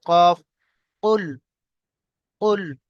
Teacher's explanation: এখানে কফ যে রয়েছে, একটা হচ্ছে কফ, একটা হচ্ছে কাফ। এই কফ উচ্চারণ করার সময় একটু কলকলা সহিত সহিত উচ্চারণ হবে।